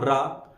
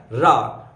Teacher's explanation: रा रथ जब आप बोलते हैं तो जीभ आप देखिए एक तरह से वाइब्रेट करती है, कंपित करती है। तो जो रा है वही है लुंठित व्यंजन।